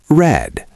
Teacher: Your tongue does not touch the roof of your mouth. Keep it down. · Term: the R sound